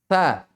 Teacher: dia di ujung lisan, keluarnya ya, di ujung lisan bertemu dengan ujung dua gigi atas.